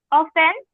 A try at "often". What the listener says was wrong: প্রায়, অফটেন না, অফেন sound আসবে, অফেন।